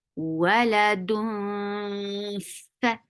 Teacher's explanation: So you're keeping the sound in your nose. You're not pronouncing noon, which is here, with your tongue, but you're using your mouth to prepare yourself to say fa. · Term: ikhfa